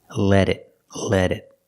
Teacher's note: We hear the T in let is a fast D. Let it, let it.